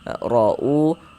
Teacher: Wallahu ra'u, huruf ra dibaca tabkhim, sudah kami jelaskan juga tadi, dibaca tebal. Ra'u, dibaca panjang. Ini namanya adalah mad badal.